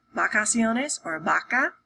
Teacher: my lips are together instead of my upper lip being on my teeth, my lower teeth.